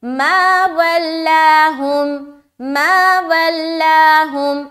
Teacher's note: لام کو بالکل باریک رکھنی ہے، لام کو موٹا نہیں کرے